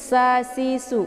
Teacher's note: bacaan su ini tipis, posisinya dia tepatnya di ujung lidah dengan gusi bawah